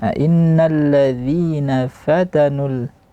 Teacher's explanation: fa tipis, ta tipis, nu tipis